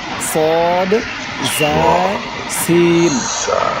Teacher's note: 3টি অক্ষর শীষ দিয়ে উচ্চারণ হবে সদ, জা, সিন